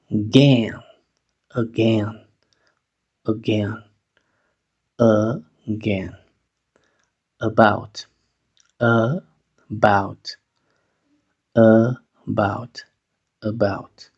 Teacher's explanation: la a va a sonar sha porque va a ser sílaba débil al inicio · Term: sonido sha, sonido schwa